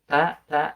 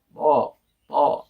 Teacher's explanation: kalau huruf po itu selain ujung lidahnya ke makhraj ta, tapi pangkal lidahnya naik ke atas